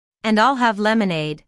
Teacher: Notice how stresses I'll and lemonade to emphasize her choice.